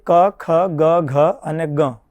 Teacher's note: વાયુ જ્યારે કંઠને અધિક માત્રામાં સ્પર્શ કરે ત્યારે એ વર્ણોનો ઉચ્ચારણ સ્થાન કંઠ ગણવામાં આવતો હોય છે.